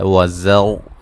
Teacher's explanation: زا کو سیٹی سے ادا کریں گے، وقفاً وصلاً را کو موٹا پڑا جائے گا.